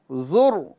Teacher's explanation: یہاں پر را کو پر نہیں کیا جائے گا